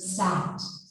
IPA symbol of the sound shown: æ